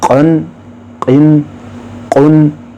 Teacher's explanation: یہ موٹا قوف ہے، اس کو ہم منہ کھول کے پڑھنا ہے، اس کی آواز لاؤڈ ہوگی